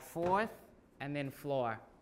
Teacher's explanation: So people don't pronounce the R after a vowel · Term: R-less